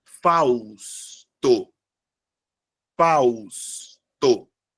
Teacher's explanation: Fausto é formado por 3 sílabas e a sílaba tônica é a primeira, sendo uma palavra paroxítona